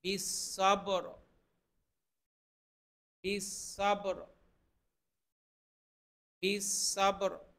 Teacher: বায়ের মধ্যে কিন্তু কলকলা হবে, বা একটা কলকলার হরফ, কলকলা মানে প্রতিধ্বনি, একটা আওয়াজ দুইবার তৈরি হওয়া